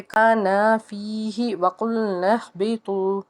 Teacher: ہا جو ہے حروف ہلکی کا حرف، حلق کے نچلے حصے سے ادا کریں گے